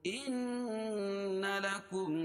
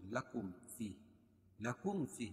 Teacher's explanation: ان لکم نون مشدد، نون مشدد میں غنہ ہوگا